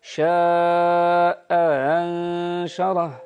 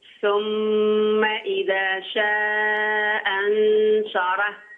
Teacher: الشاء بالنسبه للاصبهاني تحقق الهمزه الاولى وتسهل الثانيه بين بين